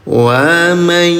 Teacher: Ya, cara bacanya dengungkan selama 2 rakaat. Bunyi nun sukunnya leburkan dulu ke huruf ya, disertai dengung selama 2 rakaat. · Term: idgham bi gunah